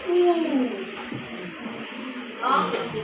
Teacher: the lip form a tight circular opening and more muscular tense · the body of the tongue is raised close to the roof of the mouth. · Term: long ooh sound